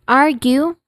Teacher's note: Argue, first syllable arg is stressed